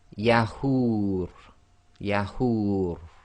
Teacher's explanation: And again, the ra will go sakin, so the dhamma wow long vowel sound can go 2, 4 or 6 long